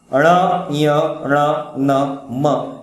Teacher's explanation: नाक और कंठ दोनों से उच्चारण होता है, उनको कहते हैं नासिक्य।